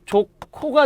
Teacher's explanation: 축약. 히읗과 지읒이 바로 만났으니까 소리가 조코가 돼야 된다